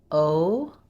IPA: oʊ